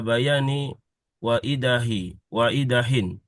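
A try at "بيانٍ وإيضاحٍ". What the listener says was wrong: Bayanin, kan ini roh. Jangan takut-takut untuk ditanwinkan ya.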